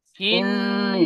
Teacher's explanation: নুনের উপরে তাসদিদ এসেছে, নুন তাসদিদ গুণনা করা ওয়াজিব, নাকে তুলে এক আলিফ পরিমাণ গুণনা করে পড়বো। · নুনের নিচে জের এসেছে, জেরটি হারাকাত, হারাকাতকে তাড়াতাড়ি পড়তে হয়, টান দেওয়া নিষেধ।